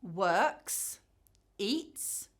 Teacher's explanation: The S comes after an unvoiced or silent sound and we hear /s/.